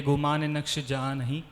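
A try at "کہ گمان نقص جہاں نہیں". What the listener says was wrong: یہ بیٹا نقش نہیں ہے، یہ نقص ہے. نون قاف صاد اور ایک ہوتا ہے نون قاف شین.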